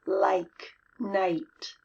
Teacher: The long I sound, I. That's 2 sounds. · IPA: /ai/